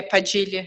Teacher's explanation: we pronounce the D in a kind of G, kind of J way in Portuguese